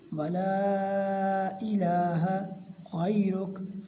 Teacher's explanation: یہاں لام کے اوپر ماد منفصل ہے اور اس کی مقدار 4 الف کا برابر ہے۔ اس کو 4 الف کا برابر ہم نے لمبا کرنا ہے۔